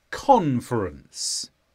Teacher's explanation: this is a noun the stress is on Con conference